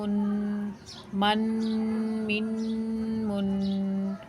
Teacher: میم کو جو ہے ایک الف کے برابر رک کر غنہ کر کے پڑھیں گے